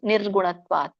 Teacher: ಅಲ್ಲಿ ನಿ ಅನ್ನೋ ಒಂದು ಒತ್ತಿ ಹೇಳಬೇಕು